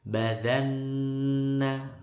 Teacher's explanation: Badanna, nun tasdid lagi dengung